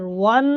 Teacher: واو کو نون کے ساتھ ملائیں گے اور واو پہ ہونٹ بھی گول ہوں گے